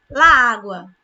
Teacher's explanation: Eu repito esse A duas vezes